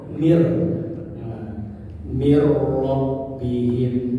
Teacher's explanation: nun sukun ketemu ro, maka bila guna, bighairi guna, nunnya melebur ke ro, jadi mir, mir rabbihim, ya. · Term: idgham